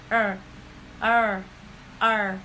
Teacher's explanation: The back of the tongue is bunch high, so the side of the tongue touch the back side of teeth.